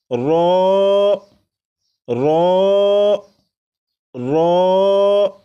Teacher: را کو 1 الف کے برابر کھینچ کر پڑھیں گے، جیسے رو رو رو، 4 مرتبہ پڑھے گا۔